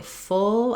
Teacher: When I say full, I have length on my vowel, the O sound.